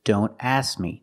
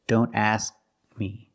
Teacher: When you say don't ask me, don't drop the K completely. We need to make the position of the K, but we don't release the sound. We don't say K.